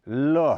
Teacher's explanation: जिनके उच्चारण के समय मुंह के मध्य हिस्से में दो अवयव एक दूसरे से मिलकर श्वास वायु को रोक लेते हैं फिर हवा एक या दोनों तरफ या पार्श्व से निकलती है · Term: पार्श्विक